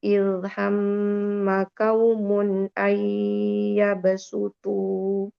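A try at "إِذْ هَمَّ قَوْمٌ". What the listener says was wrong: Izhammu qawmu. Bukan kaumu, tapi qawmu.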